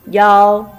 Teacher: Iao is a combination of I and ao. You speak very quickly, connect these two finals, make up one.